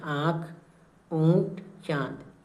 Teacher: अनुनासिक क्या होता इसे चंद्रबिंदु भी बोलते हैं और इसका उच्चारण मुख और नाक दोनों से होता है